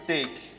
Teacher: A diphthong, c'est la combinaison du son E and I. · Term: diphthong A